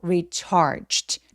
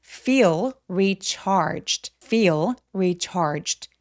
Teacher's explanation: recharged 아니고 recharged. 마치 CHT처럼 자음 소리만 빠르게 성대가 울리지 않게 소리내주세요.